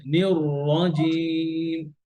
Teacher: এই যে এখানে الرحيم দুটো র আছে, এই দুটো র এখানে মোটা। · রটাকে ধরে রাখবেন, নিয়র রাজিম, নিয়র الرجيم র মোটা করবেন।